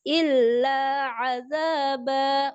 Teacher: Illa ainnya jelaskan, jangan terseret dari illanya.